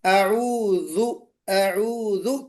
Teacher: अऊज़ु कहते हुए बेशक आप जाल निकाली, लेकिन ये पुर नहीं होना चाहिए, जाल मोटा नहीं होना चाहिए। अऊज़ु, अऊज़ु, क्योंकि ये मोटा नहीं पढ़ा जाएगा, ये वाला हर्फ बारीक ही पढ़ा जाएगा।